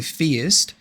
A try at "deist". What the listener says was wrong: Deist, not theist. Deist with a D. Deist with a D, not with a TH.